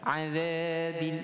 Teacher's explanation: Huruf zal pun nipis dengan dua harakat mad asli.